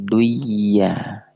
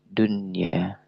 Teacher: tidak dimasukkan nun sukunnya. Karena ini hukum bacaan adalah idhar mutlak. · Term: izhar mutlak